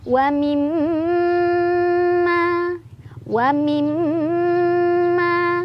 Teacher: Cara bacanya didengungkan ya. Ditahan dulu bacanya sampai kerasa ke hidung, hidungnya bergetar halus baru dilepas. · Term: gunnah musyaddadah